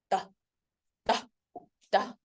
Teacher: dental the tongue between and behind the teeth